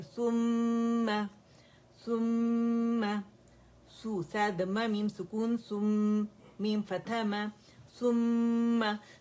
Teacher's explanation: मीम मुशद्दद है और इसके ऊपर लिप्स हमारे नॉर्मल हो जाएंगे, और मीम का मखरज टच करना बहुत जरूरी है